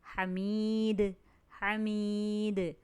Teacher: ہا حلق سے ادا ہوگا، یا مدہ ایک الف کے برابر کھینچیں گے، اور دال کو جب ہم ساکن کریں گے تو ہم اس پر قلقلہ کریں گے